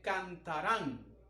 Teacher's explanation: En esta palabra, de la misma forma, la sílaba tónica recae sobre la última sílaba de la palabra y esta termina en N. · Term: aguda